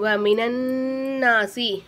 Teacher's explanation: நூனுக்கு மேலே சத்து இருக்கனால இந்த நூனை கொண்டாந்து இந்த நூனில் நல்லா அழுத்தி ஜாயின் பண்ணி ஓதணும்